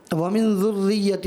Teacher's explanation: را مشدد ہے، تو یہاں بھی تھوڑا رک کر ذرا ٹھہر کر ادا کرنا ہوتا ہے